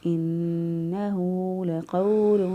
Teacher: واو ساکن سے پہلے والا حرف پر زبر ہو تو واولین ہوتی ہے، اس لیے نرمی سے، آسانی سے اور جلدی سے ادا کریں گے۔